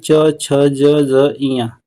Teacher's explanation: दूसरी लाइन जो होती है च छ ज ञ इसका तालु होता है